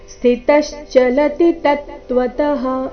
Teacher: ಕೊನೆಯ ಚರಣದಲ್ಲಿ ಎಲ್ಲ ಅಕ್ಷರಗಳು ರಸ್ವ ಮಧ್ಯದಲ್ಲಿ ಯಾವುದೇ ಅಕ್ಷರದ ಮೇಲೆ ಜಾಸ್ತಿ ಹೊತ್ತು ನಿಂದಿರಬಾರದು ಅದನ್ನ ದೀರ್ಘ ಕೂಡ ಮಾಡಬಾರದು ಸ್ಥಿತಶಚಲತಿ ತತ್ವತಹ ಈ ರೀತಿ ಕಂಟಿನ್ಯೂಸ್ ಆಗಿ ಹೇಳಬೇಕು